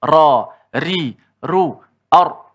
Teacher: Ra masih lagi di hujung lidah. Hujung lidah kita menghala ke langit dan ada kita kata sifat takrir.